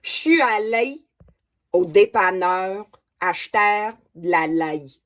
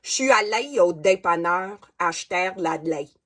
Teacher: Écoutez comment les voyelles sont ouvertes et la nasalisation, c'est très marqué.